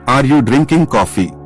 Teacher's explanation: Intonation goes up, yes, no question.